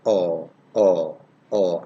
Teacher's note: oh oh oh oh but this one is less open and it's between half close and half open oh oh oh so less open than the previous one oh